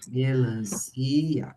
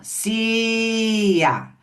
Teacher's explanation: O si não teve o som estendido